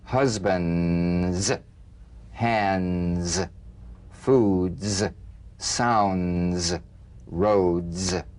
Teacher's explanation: Use a light staccato treatment without sustaining the Z. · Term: staccato Z